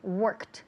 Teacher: So she worked, work en pasado, verbo regular, termina en ed, worked. Pero el último sonido, ese ed, la d al final, se pronuncia como si fuera una t